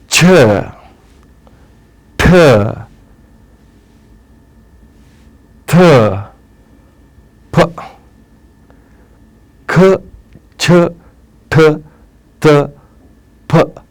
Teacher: ಉಸಿರಿನಲ್ಲಿ ಒಂದೇ ಮಹಾಪ್ರಾಣ ಉಚ್ಚಾರಣೆ ಆಗಬೇಕು ಆ ಗಾಳಿಯನ್ನ ಸಂಪೂರ್ಣವಾಗಿ ಹೊರಗೆ ಹಾಕಬೇಕು ಖಂ ಸಂಪೂರ್ಣವಾಗಿ ಗಾಳಿ ಹೊರಗೆ ಬಂದುಬಿಡುತ್ತು